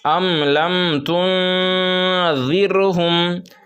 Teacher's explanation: غنہ نہیں کرنا ہے، اخفا نہیں کرنا ہے، بلکہ صاف صاف پڑھنا ہے